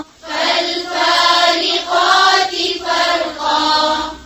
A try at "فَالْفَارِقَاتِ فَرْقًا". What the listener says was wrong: فا یا فا موٹا نہیں کریں گے. فالفارقات فرقا.